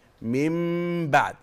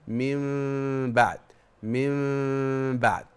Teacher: الاطباق حضرتك يعني حضرتك تطبق الشفتين من بعد يعني بالعباره الدارجه بتقفل الشفتين من بعد من بعد